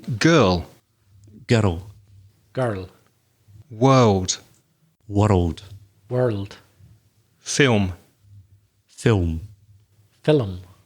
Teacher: add an e an i it's like another syllable like girl when the two consonants come together it's almost as if we make another syllable · When the two consonants come together, it's almost as if we make another syllable, girl, and world. Because the tongue is at the top of the mouth, to bring it down, you insert the I.